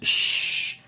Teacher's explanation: The diffusion is a characteristic of the ish, sheen, where there is a spread out of the air being blown out. Shh. It is only special for this letter.